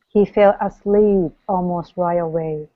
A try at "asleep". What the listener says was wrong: there's no need to elongate it so it's asleep okay so nice and quick